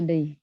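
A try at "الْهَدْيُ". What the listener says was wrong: Hadi. Dalnya tetap dipantulkan, Bu. Hadi. Yang harusnya kan had yu. Nah, tidak yu, tapi setengah ya-nya. Hadi. Nah, tidak hadi, tapi dipantulkan dalnya. Hadi.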